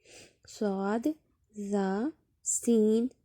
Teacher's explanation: زبان کی نوک جب ثنایا سفلی یعنی سامنے والے نیچے کے دو دانتوں کی نوک سے لگے تو یہاں سے صاد، زا، سین ادا ہوتے ہیں